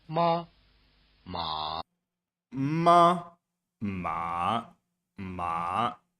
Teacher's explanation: The first tone or high tone word mother, and the third tone or low tone word, horse, will let you locate the extremes.